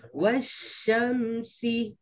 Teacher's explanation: Ini shin dengan sin sebelah-sebelah dekat-dekat. Pastikan yang shin tu ada desiran, yang sin tu boleh sebut biasa.